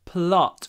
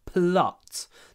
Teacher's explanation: We've got a short o before the unvoiced t, a long l.